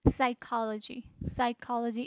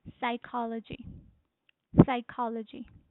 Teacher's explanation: It says psychology means the stress is on the second syllable